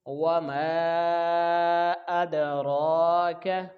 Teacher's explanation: را کے اوپر کھڑی زبر ہے تو اس کو ایک الف کے برابر کھینچ کے پڑھیں گے · دال کے ساتھ ملائیں گے تو یہاں پہ حروف قلقلہ ہے، دال ساکن، تو اس کو جنبش کے ساتھ ہم پڑھیں گے